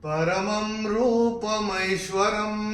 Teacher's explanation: म के ऊपर अनुस्वार के बाद का अक्षर है र और अनुस्वार के बाद जब र आएगा तो अनुस्वार का उच्चारण होगा म